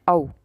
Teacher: कंठ और ओष्ठ यानी कि गला भी है और होंठ भी है, तो ऐसा एक ही ऑप्शन है इसमें, औ, है ना। हमारे होंठ भी इसमें आकार बना रहे हैं और हमारे कंठ से भी आवाज़ आ रही है, तो औ यानी कि option number B is the right answer. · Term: कंठोष्ठ